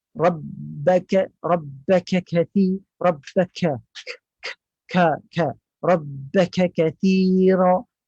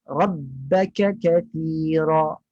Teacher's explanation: Kaf tu terlalu lepas, terlalu angin yang banyak keluar, berlebihan.